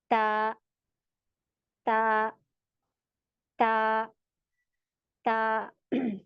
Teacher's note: ता तो पीछे जबान स्ट्रेट है कोई उठ नहीं रही और हमारी जबान की नौक है यहां पर लगेगी दांतो की जड़ों में ऊपर वाले